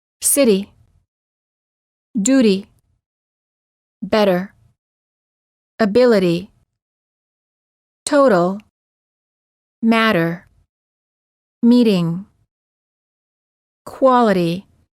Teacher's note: the T becomes a fast D in the following cases between two vowels